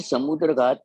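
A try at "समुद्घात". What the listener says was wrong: समुद्र नहीं है, समुद्र है। नहीं, द्र नहीं है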